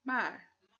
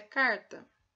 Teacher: Essa leve obstrução com a ponta da língua é feita na região alveolar. Por isso, esta consoante é chamada alveolar, aonde há obstrução.